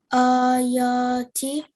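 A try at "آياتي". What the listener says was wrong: That's it. Well done. That was really nicely read.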